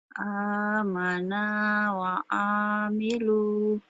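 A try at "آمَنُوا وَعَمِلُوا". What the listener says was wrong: Amanu. Bukan amana. Amanu wa amilu.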